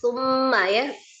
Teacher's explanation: di kata summa itu ada mim musaddadah ya, mim tasdid. Wajibul ghunnah akmal matakun, paling sempurna. Jadi digunnahkan dulu.